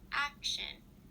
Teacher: syllable before the s h sound in a word like action you would place the stress at the beginning of the word before the sh